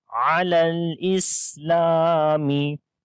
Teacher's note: لام کو لمبا کریں گے الف مدہ کی وجہ سے